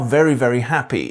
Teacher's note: The most marked changes have been a move form ɪ to i in the HAPPY vowel